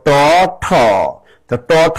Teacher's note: ট ঠ দুইটাই হলো আমাদের অঘোষ ধ্বনি। এর ভিতরে ট হলো অল্প আর ঠ হল মহাপ্রাণ ধ্বনি।